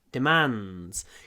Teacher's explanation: В этом слове у нас есть «н» перед «д», и поэтому вот «н» мы растягиваем.